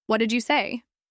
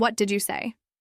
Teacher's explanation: In the first one, the word what is strong and clear. It grabs attention. In the second, it gets lost. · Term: stress